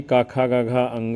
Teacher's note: क वर्ग में क, ख, ग, घ, ङ आता है। ये कंठ से बोले जाते हैं।